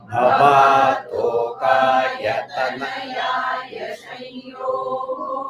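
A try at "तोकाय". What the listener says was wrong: that you are I hear you are not bringing it down.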